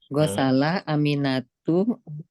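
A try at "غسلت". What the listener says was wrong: Ada taknya.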